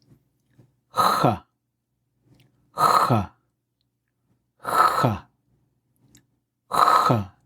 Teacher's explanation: The sound is the exact same location as a K, K, H, except instead of a click, there's a blow through. · It's very important to differentiate this from what we'll see later with the underline X. There's no guttural rattle going on with this.